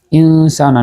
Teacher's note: নুন সাকিনের পরে সিন আসছে, ইখফা